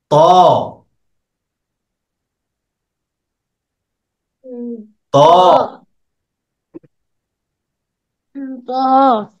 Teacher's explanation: জিহ্বার আগাটা উপরের দুই দাঁতের গোড়াতে লাগে